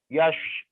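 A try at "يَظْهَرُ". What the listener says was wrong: Jangan ada S-nya. Yazharu. Yazharu. Yazharu. Yazharu. Yazharu.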